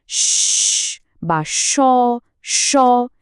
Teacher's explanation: একটা সরু জায়গা দিয়ে বাতাস বেরোতে থাকে, ফলে একটা ঘর্ষণের শব্দ তৈরি হয়, অনেকটা শীষের মতো। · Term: ঊষ্মধ্বনি